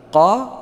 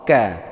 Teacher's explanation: Kalau qaf lebih ke belakang, kalau kaf lebih ke depan sedikit.